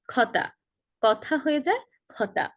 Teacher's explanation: সিলেটে যারা আছেন তাদের ক উচ্চারণ করতে সমস্যা হয়। ক এর উচ্চারণটা খ হয়ে যায়। খতা, কথা হয়ে যায় খতা অনেকটা এরকম ভাবে।